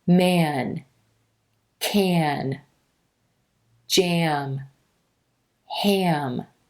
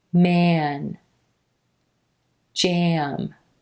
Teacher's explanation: the sound transitions from the mouth or oral cavity where the vowel sound is resonating up into the nose or nasal cavity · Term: teeny schwa sound